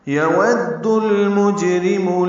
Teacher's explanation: واو کو دال سے ملانا ہے. دال کو لام سے ملانا ہے. اظہار قمری ہوگا.